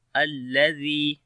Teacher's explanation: Zal we read in soft sound, and also we long ya due to yamadda.